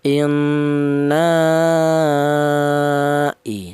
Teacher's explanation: Dinamakan mad jaiz munfasil. Adapun panjangnya yaitu 2 alif setengah atau lima harakat.